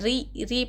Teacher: را کے نیچے حرکت زیر رہا تو را باریک ہوگی، را باریک ہوگی یعنی موٹا نہ پڑھنا، باریک پڑھنا، ری پڑھنا. ٹھیک ہے.